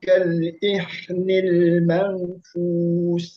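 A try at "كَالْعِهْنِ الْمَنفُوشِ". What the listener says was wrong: Jangan pakai H ya, pakai H besar. Ainil manfush.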